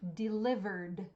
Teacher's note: we're only hearing the sound D at the end not ID do not add an extra syllable shop how many syllables just